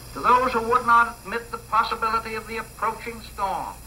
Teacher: He was a New Yorker who had the prestige pattern of the upper class in New York, and it was really R-less.